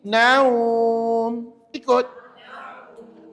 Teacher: Bila wakaf, maka automatik huruf mim ni tak boleh baca ma lagi huruf mim tu kena baca dengan mati. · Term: mad lin